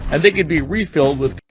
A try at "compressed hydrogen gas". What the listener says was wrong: refilled with 붙어있는 거 느껴지시죠? 붙으면서 내려가야 돼요. refilled with 그 다음에 compressed가 아니라 compressed 강세 뒤에 있습니다. 뒤에 press가 올라가야 돼요.